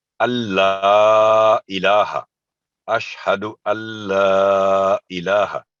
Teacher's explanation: तो यहाँ पर क्योंकि ला पर तशदीद है, इसलिए नून साकिन की आवाज बिल्कुल साइलेंट होगी, वो बिल्कुल नहीं बोली जाएगी, साइलेंट है यहाँ नून साकिन।